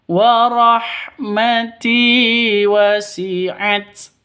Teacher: Wa rahmati tinya panjang karena ada ya mati diawali dengan kasroh atau ya mati sebelumnya berharokat kasroh. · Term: mad asli